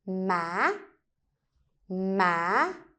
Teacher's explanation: you basically raise the voice from low to higher pitch. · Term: up tone, uptone